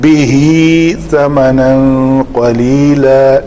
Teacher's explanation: اس تنوین کے بعد قاف حروف اخفاء میں سے ہے تو یہاں پہ اخفاء کریں گے · یہ کھڑی زبر کا مطلب یہ ہے کہ ہا ضمیر کا ماقبل زیر اور ما بعد زبر یعنی دونوں متحرک ہیں, تو اس کو ہائے مدہ بنا کر پڑھیں گے. بہی ثمنا نہیں کریں گے, بہی ثمنا قلیلا.